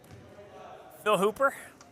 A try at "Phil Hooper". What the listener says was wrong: You didn't hold the L long enough. There's 2 L's in Phil.